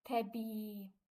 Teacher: saat və yaxud da götürüm təbii sözünü i-in biri düşəcək yazılışda qeyd eləyim təbii sözündə iin biri düşəcək digəri uzun tələffüz olunacaq